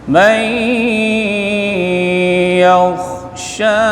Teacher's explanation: nun mati jumpa dengan ya idgham bi gunnah dengung